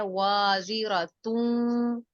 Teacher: وازرتون، یہاں پر آپ تنوین دو پیش کو واو کے ساتھ ملا کر ادغام کریں گے